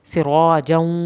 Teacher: سین کو سیٹی کی آواز کے ساتھ، را کو پر کر کے پڑھنا ہے. سراجا واو کی شد آ گئی تو دیر لگائیں گے.